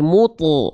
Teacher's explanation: Nah, kenapa bunyinya bukan mute tapi mutu? Karena pangkal lidah kita diangkat. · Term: huruf tebal